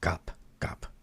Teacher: And um and the N sound is technically the hungle ba which is like the B sound in English but it ends up sounding more like a P sound at the end